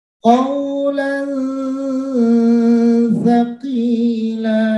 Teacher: tanwin bertemu dengan sa, maka mulut kita sudah berada di posisi huruf sa. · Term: ikhfa